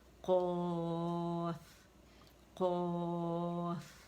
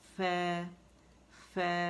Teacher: قا موٹی ہے, زبان کی جڑوں پر جا کے نرم تالو سے لگے گی, اور فا باریک ہے